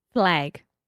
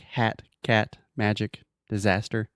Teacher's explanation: it's a very open and front sound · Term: ah sound